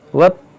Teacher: देखिए यहाँ पर जीम है, वक्फ़े जायज़ की अलामत है। यहाँ पर वक्फ़ करेंगे तो मद्दे लीन आरिज़ होगा क्योंकि हुरूफ़ लीन के बाद रा पर आरज़ी सुकून आ रहा है रुकने की वजह से, तो यहाँ पर मद्दे आरिज़ होगा।